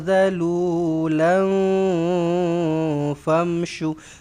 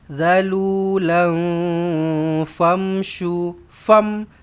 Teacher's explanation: Ikhfa hakiki. Kena dengungkan dua harakat.